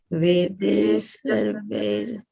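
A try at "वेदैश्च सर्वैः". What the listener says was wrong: Yeah, put them to a little together, right? Let them come a little bit close, okay?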